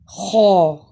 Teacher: خو ادنیٰ حلق یعنی منہ کے نزدیک والے حصے سے ادا ہوتا ہے